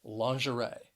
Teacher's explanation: the word has three syllables and the stress is on that third syllable